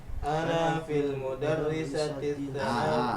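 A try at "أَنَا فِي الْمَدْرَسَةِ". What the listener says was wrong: itu madrasah bukan mudarisah ya, ngebet dengan mudarisah ya.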